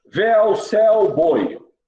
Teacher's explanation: Vocês vejam que sai todo o som pela boca. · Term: Ditongos orais